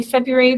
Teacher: there's an r in there that we don't really pronounce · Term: silent